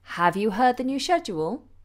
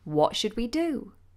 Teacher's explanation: listen to that rising intonation it goes up at the end because it's a question